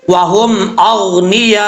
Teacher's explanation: جب وقف کریں گے تو حمزہ کو ساکن کریں گے، حمزہ کی ہاف حالت پڑھی جائے گی۔ کیسے؟ وَهُمْ أَغْنِيَاء، یہ جو لاسٹ پہ یہ آواز آ رہی ہے یہ حمزہ کی آواز ہے، تو جب یہ آواز آئے گی تو حمزہ پڑھا جائے گا، حمزہ پڑھنے کی وجہ سے مد متصل ہوگی، 5 الف کے برابر اس کو لمبا کیا جائے گا، اس کی مقدار ہے۔